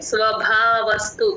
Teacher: స్వభావస్తు భ కి మహాప్రాణం ఉందండి